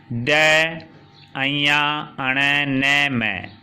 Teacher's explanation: ये नाक से भी बोले जाते हैं और इनका उच्चारण मुख से भी होता है। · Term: नासिका वर्ण